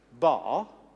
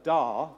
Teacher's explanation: Everything else is the same, but if you look at the frequencies generated by my throat, in the second formant, as it's called, which is developed by the larynx, and the third, which is developed by the pharynx, you see the frequency goes up in b, but down in d